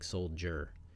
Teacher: the word soldier so the D and soldier is the third you don't really hear the duh you hear a jaw like soldier